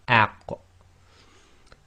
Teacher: and then you block the throat so it's out but and you have to separate at the end in order to finish the sound which gives a slight echo